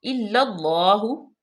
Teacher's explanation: اللہ کے لام بھی مشدد ہے، اور اس کو پر پڑھیں گی کیونکہ اس سے پہلے زبر ہے، ہا پہ پیش ہے۔ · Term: لام مشدد